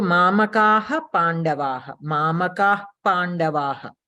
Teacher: the visarga sound is not coming from the bottom of your throat, but only from the oshta bhaga. So that is called upadmaniya.